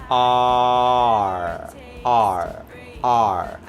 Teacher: 혀를 처음에는 그냥 풀어놨다가 힘을 꽉 주면서 올라오는 소리가 음절 끝에 오는 R 소리입니다.